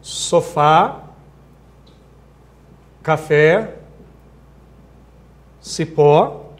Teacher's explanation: são palavras cuja tônica é a última sílaba